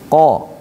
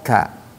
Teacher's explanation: Kalau qo ini dia lebih dekat dengan tenggorokan. Qo itu dekat dengan tenggorokan. Kalau kaf lebih dekat ke depan.